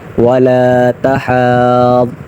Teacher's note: ضاد مشدد ہے تو لہٰذا اس پر ذرا رکیں گے اور سختی سے پڑھیں گے